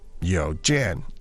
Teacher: the tones are second and fourth second and four